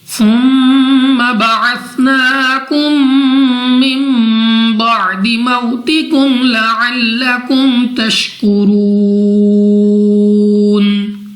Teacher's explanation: ثم میم مشدد میں ہمیشہ ہر حالت میں غنہ ہوتا ہے